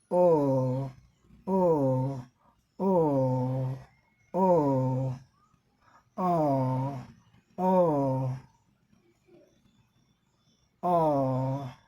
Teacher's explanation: और यहाँ लिप जो वेरी राउंडेड, हमारे होठ जो हैं ये गोले हो गए हैं। ओ ओ ओ ओ ओ ओ ओ, लिप जो फॉरवर्ड और थोड़ा ये हमारे जो ये पार्ट हैं ये जो है आगे की तरफ निकल आए हैं।